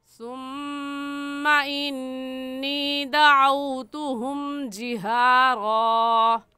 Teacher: सुम्मा में मीम मुशद्दद है और मीम मुशद्दद पर हमेशा गुन्ना होता है, इसलिए यहाँ पर गुन्ना करेंगे।